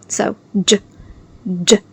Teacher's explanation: the J sound is made of two sounds, D and J together